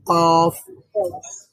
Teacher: জিহ্বার একেবারে শেষ ভাগ উপরে নরম প্যালেটে যোগ করতে হয় মানে সেখানে টাচ করতে হয়